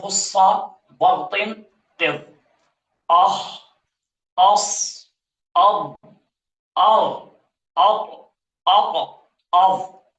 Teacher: یہ جتنے بھی حروف ہیں خصہ، بغطن، قف، یہ سارے کے سارے حروف مستعلیہ ہیں۔ ان میں استعلاء پایا جاتا ہے، موٹاپا آ جاتا ہے، یہ پر حروف ہیں۔